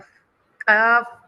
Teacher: क़ाफ इसको फथा, मुफख्खम भरा हुआ